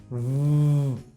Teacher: But if you produce the V sound, V, right, you will realize that your vocal cords vibrate, okay? So when there is vibration, the sound is voiced, right?